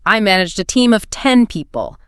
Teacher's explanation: the musical pitch of your voice rises at the very end of a declarative statement, making it sound phonetically identically to a question. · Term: upward inflection